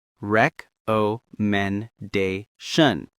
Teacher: 5 syllables with the primary stress on da.